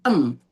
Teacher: makhrajnya si kaf ini kan ada di pangkal lidah. Karena dia siap-siap ke belakang. Maka bacanya hampir ke eng. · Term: ikhfa